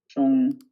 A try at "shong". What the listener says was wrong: Yeah, I feel like you've lost the sh now. So remember, it's sh. This is sh.